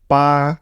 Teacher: the first tone is a bit High the second tone is a from middle to high b b